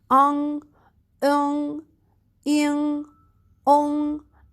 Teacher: the g sound, that it must comes out from your nose